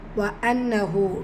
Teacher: நூன் முஷததா குன்னா செஞ்சு ஓதணும்